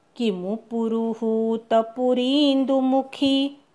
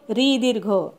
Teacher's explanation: किमु पुरुहूत हू दीर्घ पुरी री दीर्घ आणि खी दीर्घ